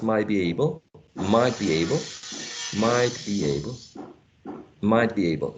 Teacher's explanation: an elision of t or a regressive assimilation, the t sound becoming more similar to b